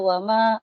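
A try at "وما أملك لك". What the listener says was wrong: Kalau berhentinya jangan di situ, nanti terputus lakanya. Wa ma amliku lak.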